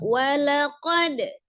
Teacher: Ya, masuk di ayat 62. Walaqad, ada dal sukun dihukumi qalqalah ya. Jadi dipantulkan pada saat wasol atau pertengahan, maka qalqalahnya dibaca qalqalah sugra saja, kecil.